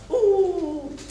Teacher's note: it's closed it is back and it is rounded